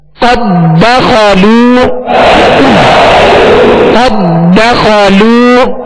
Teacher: اب یہاں ادغام مثلین تام ہے یعنی قد دخلوا نہیں پڑھیں گے. دال کو دال میں مکمل داخل کریں گے